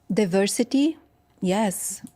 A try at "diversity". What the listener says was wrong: Diversity. So now she could use a flap T. Diversity or diversity? Diversity. Remember, flap T doesn't just make us sound American. It tells us that T is unstressed.